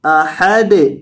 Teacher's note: دال کو ساکن کریں گے اور ہلا کر پڑھیں گے